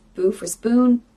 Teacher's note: If there's two consonants together, like the sp, spoon, they might leave one out.